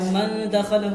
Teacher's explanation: اور من دخلہ میں نون ساکن کے بعد حروف اخفا میں سے دال آیا ہے، اس لیے انہوں نے یہاں پر نون ساکن کی آواز کو ناک میں چھپا کر غنہ کے ساتھ پڑھا ہے